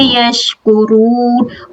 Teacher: الناسی، نون میں شدہ اکمل گنہ ہے، لا الف مد، یش، شین کی جو تفشی اس کو واضح کریں گے